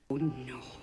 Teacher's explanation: You don't hear the tongue and the lips traveling to a different position.